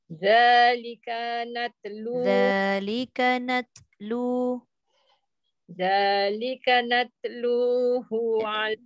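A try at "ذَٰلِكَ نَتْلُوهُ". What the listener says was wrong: ta jangan natlu, dia bunyi qalqalah nanti. Natlu angin saja. Nat.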